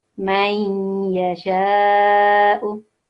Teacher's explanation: Yeah, so also we can call this in English partial assimilation. So we slightly hear the noon sakin when joining this